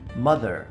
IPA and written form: ˈmʌð.ɚ (mother)